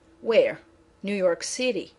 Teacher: if you want more information instead of repetition, your voice is going to go down.